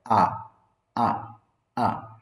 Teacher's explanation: সাধারণ স্বাভাবিকভাবে অর্ধেক গাল হা করে বলতে হয় আ অনেক বেশি টান না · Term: আ সাউন্ড